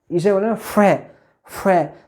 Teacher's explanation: तो वायु संघर्ष यानी थोड़ा तेजी से घर्षण करते हुए निकलती है, तो ये जो है संघर्षी व्यंजन है।